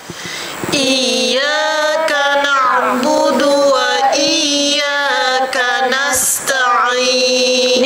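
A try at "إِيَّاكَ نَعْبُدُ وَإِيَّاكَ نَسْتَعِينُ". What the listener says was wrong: Nipiskan lagi bunyi waw. Iyyaka na'budu wa budu wa budu wa.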